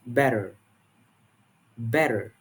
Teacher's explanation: the t sound between vowels often becomes a flap sounding like a quick d · in general British English, the T sound is typically pronounced clearly without flapping.